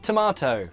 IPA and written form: təmɑːtəʊ (tomato)